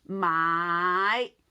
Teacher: You learn the tone 5, you keep rising, okay? From low to middle and stop here, okay?